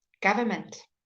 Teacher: Even slowly, the government, we never say the first N.